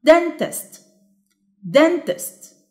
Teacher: the stressed syllable is dent